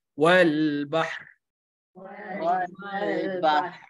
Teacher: Pastikan ada getaran ra, insya-Allah bacaan tu betul lah.